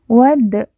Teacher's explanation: Dal sukun kita baca pantul karena merupakan salah satu dari huruf pantul atau huruf Qalqalah